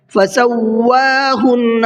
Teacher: واو کے اوپر تشدید ہے، واو کو ڈبل پڑھنا ہے۔ فسواہن، نون کے اوپر تشدید ہے، غنہ کریں گے۔